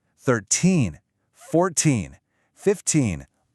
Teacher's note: Now listen to the teen numbers. The stress, the power is on the end.